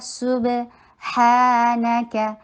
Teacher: صبح سین کے پر ضمہ، ہونٹوں کو گول کرنا، با کے پر قلقلہ. سبحانک ہا ٹو کاؤنٹس لانگ اور ہمس، ہا میں ہمس آئے گا. نون اور کاف شارٹ اور دونوں کو لائٹ رکھا جائے گا.